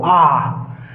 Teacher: विपरीत स्वर केवल एक है आ, जहाँ मुख पूरा खुला हो, आ, तो विपरीत स्वर होता है, बाकी सब अर्ध विपरीत स्वर में ओ ऐ ए।